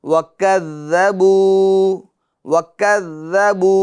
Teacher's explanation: یہاں بو میں واو مدہ ہوگا، لہٰذا اس کو ایک الف کی مقدار کھینچ کر پڑھیں گے